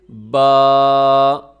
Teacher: الف مدہ ہے تو آپ کو پتہ ہونا چاہیے کہ اس کا مخرج جوف دہن ہے، یہ منہ کے خلا سے نکلے گا، جیسے با۔ اب آپ کے پہلے آپ کے ہونٹ ملتے ہیں با پہ، کیونکہ با کا مخرج تو دونوں ہونٹوں کا ملنا ہے، لیکن اس کے بعد جو الف کا ساؤنڈ ہے وہ خالی منہ کے خلا سے آ رہا ہے، با۔